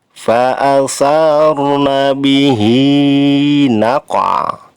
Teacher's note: Hi-nya dibaca panjang 2 harokat termasuk mad tabi'i